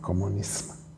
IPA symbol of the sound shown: -sm̥-